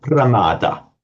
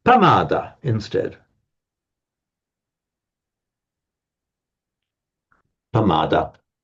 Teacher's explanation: It's the opposite of mindfulness, pramada. In Pali can't do a pra, so they have pamada instead.